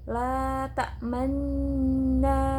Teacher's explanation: Ismam yaitu mencampurkan dhammah pada sukun dengan memoncongkan bibir.